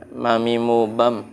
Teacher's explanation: Mim, tempat keluarnya ada di mana? Bibir.